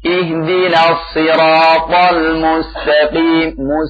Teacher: Sodnya perhatikan. Si bukan si ya. Ihdinas-si. Ya. Dengan itbaq dan juga isti'la'nya.